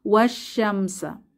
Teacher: সাদ্দা বা তাশদিদ যুক্ত যে শিন এসেছে সাদ্দা যুক্ত অক্ষর তাহলে এখানে আমাদের সরাসরি ওয়াও সাদ্দা যুক্ত শিন কে ধরবে মাঝে যে আলিফ লাম আছে এগুলো উচ্চারণে আসবে না